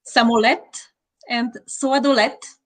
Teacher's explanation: They both ended with a voiceless ta.